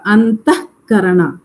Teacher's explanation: That visarga is reduced to half. Aha is a visarga, but we say just half of the visarga. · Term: jihva muliya